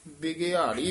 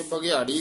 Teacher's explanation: ਆਮ ਪਾਠੀ ਸਿੰਘ ਬਬੇ ਦੀ ਸਿਹਾਰੀ ਨੂੰ ਛੱਡ ਜਾਂਦੇ ਨੇ ਬਗਿਆੜੀ ਕਹਿ ਜਾਂਦੇ ਨੇ ਬਬੇ ਦੇ ਵੀ ਸਿਹਾਰੀ ਹੈ ਘਗੇ ਦੇ ਵੀ ਸਿਹਾਰੀ ਹੈ। ਬਿਗਿਆੜੀ